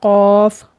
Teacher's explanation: कौफ मोटा करके पढ़ना है। और यह खलक की तरफ से निकलेगा।